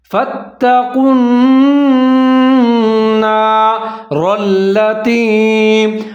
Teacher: لیکن آگے جو نون ہے وہ پھر مشدد ہے، شدار ہے، وہاں پر ہم ادغام کریں گے اور غنہ کریں گے اور آواز کو ناک میں لے جائیں گے · پر بڑی چیز یہ ہے کہ واو ختم ہو جائے گا، واو کی آواز کو ہم نہیں پڑھیں گے، قاف کو نون کے ساتھ ملا دیں گے · را کے اوپر زبر ہے، اس کو موٹا پڑھنا ہے ، آگے را جو ہے لام کے ساتھ مل رہا ہے،